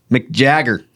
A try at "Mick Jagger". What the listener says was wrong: I don't know if you noticed. You run that together. Mick Jagger. No, it's Mick Jagger.